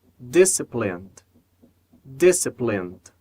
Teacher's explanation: na palavra disciplined, nós vamos conectar o N ao D.